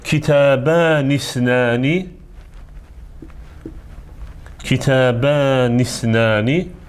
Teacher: bu zaman o isnəni sözünə bitişik formada oxunacaq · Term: birləşdirici həmzədir